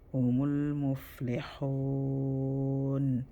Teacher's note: so this lam sukun, we're gonna hold it for 1 second